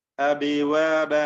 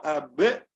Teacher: ചുണ്ടുകൾ ചേർന്ന് പിന്നെ ആ ശബ്ദം ഇങ്ങനെ വേർപിരിഞ്ഞുകൊണ്ടാണ് നമ്മൾ ഉച്ചരിക്കുന്നത് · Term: ഹുറൂഫുൽ ഖൽഖല